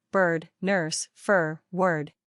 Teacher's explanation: This is a mid-central stressed vowel with an R-colored quality. It is fully pronounced with a tight tongue position, giving it a strong R sound. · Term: Stressed rhotic vowel